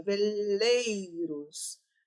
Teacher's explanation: Aqui o som desce no e começa com vogal e desce para semivogal.